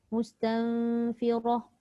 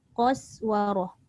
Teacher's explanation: Sebab qaf tebal, sin dengan waw tu nipis, lepas tu jumpa balik ra tebal. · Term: tafkhim